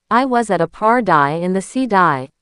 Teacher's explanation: Feel how your tongue just lightly flaps against the roof of your mouth. It's not a hard D, like in dog. It's a light, quick tap.